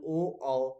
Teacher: कंठोष्ठ का मतलब है कंठ से और ओठ से, दोनों से, कंठ से भी और ओठ से भी, दोनों से। ओ औ कंठ और ओष्ठ दोनों से बोला जाता है।